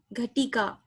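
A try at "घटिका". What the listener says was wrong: It is Ghatika, not Ghatika. You are making it Dirga. That is not Dirga. There is no word Ghatika. Ghatika only is there.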